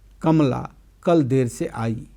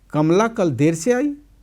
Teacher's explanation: देर से पर अवरोही तान के साथ कहा गया वाक्य एक कथन है जिसका अर्थ है कमला कल ठीक समय पर नहीं बल्कि देर से आई। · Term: आरोही तान